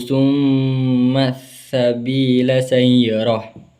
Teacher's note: bacaan alif lam syamsiyah di mana alif lam ini bertemu dengan huruf syamsiyah yaitu sin, di mana ketika bacaannya ini lamnya tidak terbaca . Dan ada bacaan mad tabi'i yaitu ya sukun didahului oleh